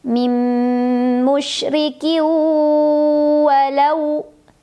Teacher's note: tanwin kasrah dileburkan ke huruf waw sambil berdengung. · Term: idgham bi gunnah